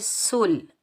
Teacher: سین کو ہم لام ساکن کے ساتھ ملائیں گے، بغیر کھینچے پڑھیں گے سل، اور ملانے کی صورت میں حمزۃ الوصل حذف ہو جائے گا، ختم ہو جائے گا اور بغیر کھینچے پڑھیں گے سل۔ · سین سختی اور سیٹی والا حرف ہے تو سین پر ہم سیٹی کی آواز نکالیں گے۔ آگے واؤ آ رہا ہے تو واؤ کے اوپر کوئی اعراب نہیں ہے تو واؤ کو ادا ہم نہیں کریں گے، واؤ کو ہم نہیں پڑھیں گے۔